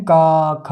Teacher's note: कंठ से आवाज आती है